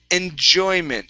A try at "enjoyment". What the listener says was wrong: So we have that J here again. So instead of enjoy, it's enjoy. Enjoyment. Okay, one more time. Instead of shoy, it's